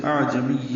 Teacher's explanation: حمزہ اقصی حلق سے، عین وسط حلق سے ادا کریں گے، عین ساکن پہ اظہار ہوگا، میم کو یا سے ملائیں گے.